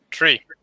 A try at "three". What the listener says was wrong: You pronounce it as though you're saying tree. It's 3.